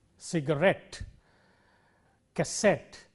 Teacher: take words ending in ET te words like cassette or cigarette in all these words the stress is on the last syllable